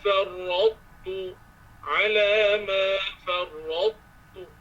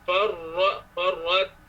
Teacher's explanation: Masa ra dengan ta. Ra tebalkan dia.